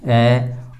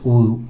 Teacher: तो जो ए है वह कंठ से बोला जाता है और ऊ है वह ओष्ठ से बोला जाता है, तो इनका उच्चारण स्थान कंठोष्ठम है।